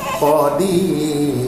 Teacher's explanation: ra itu ra nipis. Nah, sebab apa? Sebelum dia ada huruf ya mat.